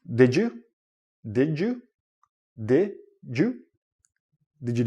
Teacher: when you're connecting words and you have a D and a y together it becomes like a J sound